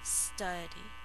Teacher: study, 2 syllables. First syllable is accented.